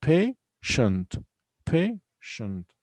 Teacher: We have only two syllables here. Patient. Patient. And also the stress is on the first syllable.